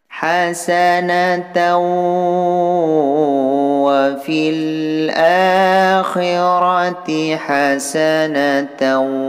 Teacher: Cara bacanya bunyi ta dimasukkan terhadap waw dan disertai dengung 2 harakah. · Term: idgham bi gunnah